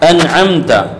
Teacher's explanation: نون کو اور میم کو اظہار کے ساتھ پڑھا جائے گا، اس لیے کہ نون کے بعد عین ہے، میم کے بعد تا ہے، جس میں کوئی جو ہے آپس میں کوئی جو ہے تعلق ان میں نہ تو تماثل کا، نہ تجانس کا، نہ تقارب کا ہے، لہذا ایسے موقع پر کیا جاتا ہے؟